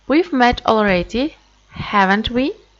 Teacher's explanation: another way of pronouncing question tag is when you pronounce it with the rising intonation